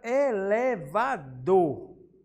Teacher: O dor, ele é com maior intensidade. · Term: sílaba tônica